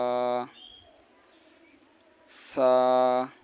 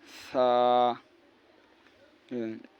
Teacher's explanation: আপনার জিহুব্বার আগা আছে না, উপরের দাঁতের আগার সঙ্গে লাগাইয়া নরম করে উচ্চারণ হবে।